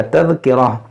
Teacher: इस गोलता को हा साकिना बना दिया